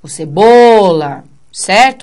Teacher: o bo que é fortão e o A fica por último